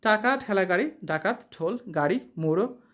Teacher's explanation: জীভের ডগা মূর্ধার সঙ্গে লেগে বায়ুপথে বাধা সৃষ্টি করে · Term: মূর্ধন্য ব্যঞ্জন